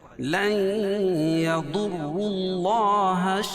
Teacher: اللہ کے لام سے پہلے پیش ہے تو اللہ کا لام بھی پور پڑھا جائے گا